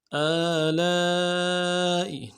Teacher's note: الف مدہ کے اوپر مد اصلی ہے، تین الف دار میں کھینچیں گے